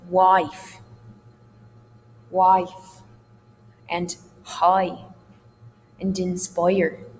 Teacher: Long I sounds are also diphthongal. Sometimes it's called the Canadian rising diphthong, as in wife, and high, and inspire.